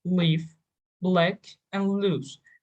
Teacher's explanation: easier clear l and dark l when l precedes a vowel you pronounce this l with the tip of your tongue by touching your tongue to your teeth and this is called clear l